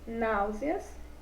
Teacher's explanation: são aquelas palavrinhas cuja sílaba tônica é a antepenúltima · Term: proparoxítonas